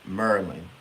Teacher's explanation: we say maryin so we take a syllable away